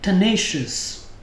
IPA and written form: təˈneɪ.ʃəs (tenacious)